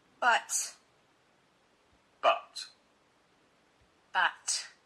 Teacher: So we hear the word but by itself with a very strong t at the end.